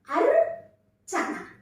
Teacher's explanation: అంటే ఫస్ట్ ఆ ర ని సగం మాత్రమే పలుకుతున్నాం. ఈ ర అనే హల్లుకి చ అనే హల్లు ఒత్తిగా చేరింది. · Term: సంయుక్త అక్షరాలు